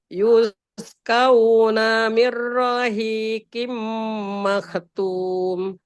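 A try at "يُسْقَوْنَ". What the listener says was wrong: Jangan kauna, bukan ka, bukan a. Ko. Kau.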